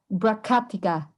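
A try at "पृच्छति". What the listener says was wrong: So it's Prichaticha. Prichaticha. Remember, in the system of transliteration that we're using, the letter C always represents the sound cha. So whenever we transliterate the sound ka, we always use a K.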